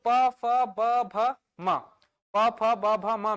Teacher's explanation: दोनों होठों आपस में टच कर रहे हैं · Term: ओष्ठ